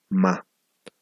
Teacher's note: Es imposible decir ma, digamos, sin que el aire también salga por la cavidad nasal